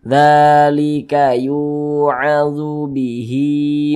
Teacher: Mad Silah qasirah panjangnya dua harakat